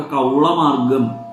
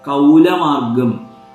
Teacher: നമ്മുടെ നാട്ടിലുള്ളവരൊക്കെ കൗളമാർഗം എന്ന് പറയുന്നു കൗലമാർഗം എന്ന് ഭാരതത്തിൻറെ ഉത്തരദേശത്തുള്ളവർ പറയുന്നു